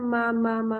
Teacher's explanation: میم جو ہے وہ ہونٹوں کے بس ملا لینے سے ادا ہو جاتا ہے